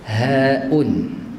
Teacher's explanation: Ih, huruf ha dia ada angin, hamas dia ada hamas. Bukan ha pedah je ada angin.